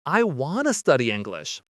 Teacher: Here we're changing want to to wanna. Again the word to changes to ah.